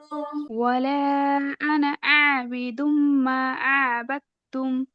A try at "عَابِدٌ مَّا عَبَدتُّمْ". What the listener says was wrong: عابد মানে আইনের উচ্চারণ আপু عابد ما عبدتم আইন আলিফ জবর বলেন দেখি আ একদম ভিতর থেকে গলার মাঝখান থেকে